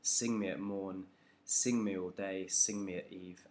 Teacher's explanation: having each verse begin with a trochee, it's just sort of adding to that emphasis on this word sing,